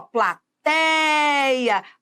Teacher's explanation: Essa é a sílaba tônica, olha, a sílaba tônica é o tei e a vogal tônica, ela estará sempre dentro da sílaba tônica, é o é